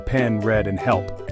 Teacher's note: as in dress is short, mid, and front, heard in pen, read, and help. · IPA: /e/